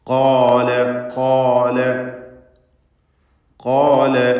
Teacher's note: ഖാഫ് ഇസ്തിഅലാഇൻ്റെ അക്ഷരങ്ങളിൽപ്പെട്ടതാണ്. തഫ്ഖീം ചെയ്യണം, തടിപ്പിച്ച് സ്വരഭാരത്തോടെ ഉച്ചരിക്കണം. അതിൻ്റെ ദീർഘാക്ഷരമായ അലിഫിലും തഫ്ഖീം വേണം.